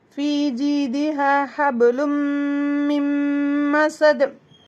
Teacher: நூனுக்கும் மீமுக்கும் ஷத்தா இருந்தாலே ரொம்ப ஸ்ட்ராங்கா டூ கவுண்ட்ஸ் கொடுத்து அதிகம் டைம் கொடுத்து குன்னாவை வச்சு செய்யணும் · ரொம்ப முக்கியமான ஒரு மஹ்ரஜா இருக்க போகுது மீமுக்கு உதடுல ஒரு மஹ்ரஜ் இருக்கு மூக்குல நூனையும் மீமை வந்து உதட்டுலையும் சேர்த்து சொல்லணும்